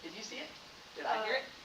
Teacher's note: Did I say the T sound? I did not. We don't. We say glottal stop.